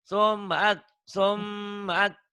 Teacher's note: M-nya ditahan, A-nya dilepas.